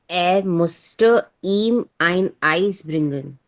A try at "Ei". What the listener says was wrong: Ei, nicht Eis.